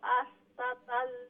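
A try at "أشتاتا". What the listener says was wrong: আশতা তা আলিফ নাই, তারপরে আলিফ মাদ্দা আছে, তো আশতা তা লম্বা করবা, আশতাতাল ওমুল্লাহান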